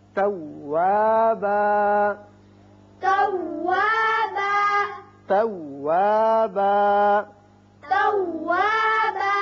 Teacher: وقت کی صورت میں ایک الف کے برابر آواز کھینچی جائے گی، زیادہ نہیں کھینچے گے